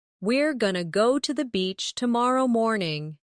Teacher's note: Going to often becomes gonna in casual speech.